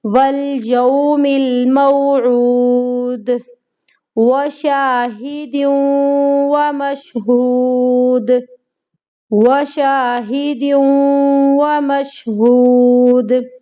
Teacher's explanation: آیت ختم ہو رہی ہے، آخر میں دال ہے، دال پر کلکلا ہوگا،